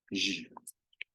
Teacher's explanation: pronounce this phoneme as a voiced post-alveolar fricative, like the zh sound in the English word garage